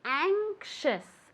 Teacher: The A is very nasal